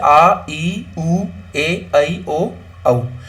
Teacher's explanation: जिन वर्णों के उच्चारण में हस्व स्वर से दो गुना समय लग रहा है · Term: दीर्घ स्वर